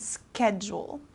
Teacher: this s kind of turns into like a k sound